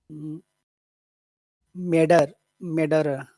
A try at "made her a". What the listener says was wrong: But don't remember, made is very long, especially because of the D, but also it's an important word. So That's got to be pretty big. Maidera, Maidera, Maidera.